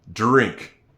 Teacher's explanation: It sounds like a J, doesn't it? But in in fact, it's a dr together.